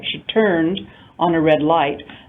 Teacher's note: The stress in that case falls on the verb, turned, because on a red light is simply a prepositional phrase